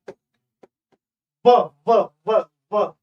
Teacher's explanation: ऊपर के दांत प्लस नीचे का ओठ, यहां से उच्चारित होने वाली व ध्वनि